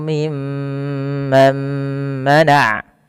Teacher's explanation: ketika kita membaca mim tasydid ini, itu perlu ditahan suara gunnahnya ya, atau memahan suara mimnya.